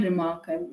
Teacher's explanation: the re has a sort of a recessive sound which means that the sound is not that prominent whereas the mark has a more prominent to it right so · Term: recessive syllable